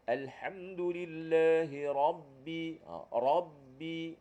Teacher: membincangkan tentang ro tebal dengan ro nipis di mana tuan-tuan sekalian ro tebal ni pangkal lidah juga terangkat